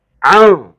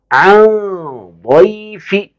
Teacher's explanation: اسی طرح یہ لاسٹ میں آخر میں ہے عن ضیفی، عین نون زبر عن، عین نون زبر عن، نون تو ظاہر صاف پڑھیں گے، لیکن جب آگے کو ملا کے پڑھیں گے تو پھر یہ اخفا ہے